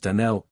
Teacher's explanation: the correct pronunciation of our name is Donnell, accent on the last syllable.